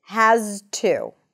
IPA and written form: hæz.tu (has to)